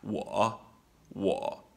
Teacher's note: it's a low creaky voice and it's short don't let it hang on forever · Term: third tone